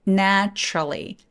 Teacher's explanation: 중간에 있는 유가 사라지게 돼요 그래서 t하고 r이 한 번에 바른 데서 내츄럴리 나 트롤리라고 소리냅니다